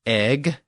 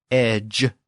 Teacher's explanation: The Old Norse egg has the original G sound at the end, and the Old English edge has the newer J sound at the end. And that J sound is represented by that Old English spelling DGE.